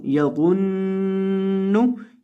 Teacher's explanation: वा को आपने मोटा करके पढ़ना है और नून के ऊपर आपने गुन्ना करके पढ़ना है क्योंकि यहाँ नून मुशद्दद है